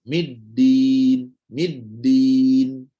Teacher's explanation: tolong betulkan bahawa dal tak boleh ada angin